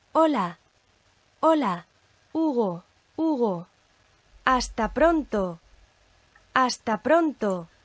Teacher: as you can hear, there is no sound from that H by itself at all